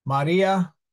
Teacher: the I is short and therefore the a is stressed